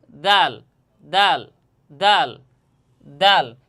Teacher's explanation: জিহ্বার আগা সামনের উপরের দুই দাঁতের গোড়ার সঙ্গে এবং হালকা মাড়ির সামনে লাগাইয়া দাল হরফ উচ্চারণ হবে